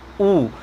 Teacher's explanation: ऐसे स्वर जिनके उच्चारण करने में हमारे ओंठ की जो आकृति है वो कैसी हो जाती है, गोल, एक सर्कल बना लेती है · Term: वृत्ताकार स्वर